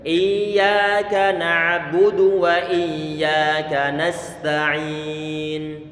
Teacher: Perlu untuk dibuat mengalir karena sifat huruf ya dia adalah rikhawah, mengalir suara. Ditasydidkan saja tanpa ditekan kencang-kencang.